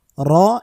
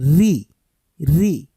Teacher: রু বলার সময় মোটা করব ঋ বলার সময় মুখ খোলা রেখে পাতলা করে উচ্চারণ করব